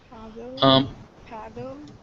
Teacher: Battle, paddle. And you can hear that puff of air at paddle